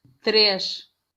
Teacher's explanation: Ese suena como el español pero con sh, pero eso es para el portugués europeo. · Y también como termina en S, es de esos que nos harían la diferencia en el portugués, porque el portugués europeo va a sonar SH. Y de hecho no suena la I.